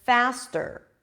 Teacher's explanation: Here it's a true T. Okay, it's a regular T, because it appears after an S